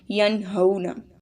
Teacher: واو ساکن ہے اور اس سے پہلے زبر ہے، تو واو لین اس کو بھی لمبا کریں گے